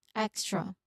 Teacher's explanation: So it's a tight sequence of K, S, and T. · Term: KST cluster